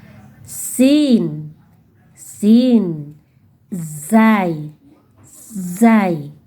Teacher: huruf-huruf yang keluar ujung lidah yang menyentuh gusi bawah. Ayo kita sentuhkan ujung lidah kita ke gusi bawah.